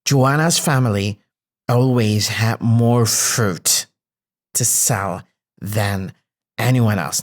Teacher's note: I stressed a bit more had because it's a main verb.